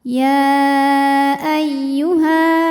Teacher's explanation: karena ada Alif didahului harakat fathah maka panjang Hnya dua harakat · Ketika berhenti di ha, ini hukumnya mad tabi'i karena ada alif didahului harokat fathah, maka panjang haknya 2 harokat. Ya ayyuha. Namun panjangnya hanya saat berhenti. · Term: Mad thi'i